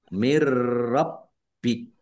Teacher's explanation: Nun sukun bertemu dengan huruf ro, bacaan idgham bila gunnah. Masuk dengan tidak mendengung, yaitu masuk ke huruf ro, nun sukunnya tidak dibaca, tetapi tidak mendengung. Mirrobbik. Roknya ditandai dengan ada tasdidnya, roknya dibaca double. · Roknya ditandai dengan ada tasdidnya, roknya dibaca double. Kemudian baknya juga dibaca double, ada tasdidnya, ditekan dan ditahan biar tampak doublenya.